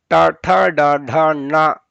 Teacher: ಆ ಮೇಲ್ಗಡೆ ನಾಲಿಗೆ ತಾಕಿ ಉಂಟಾಗುವಂತಹ ಅಕ್ಷರಗಳು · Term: ಮೂರ್ಧನ್ಯಗಳು